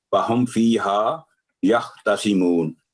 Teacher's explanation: میم ساکن کی آواز یہاں لمبی نہیں ہوگی، کیونکہ میم کے بعد نہ تو با ہے نہ تشدید ہے